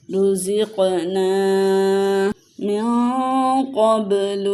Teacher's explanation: نون ساکن ہے، اور نون ساکن کے بعد قاف حروف اخفا میں سے آیا ہے، تو یہاں پہ اخفا کا قاعدہ ہوگا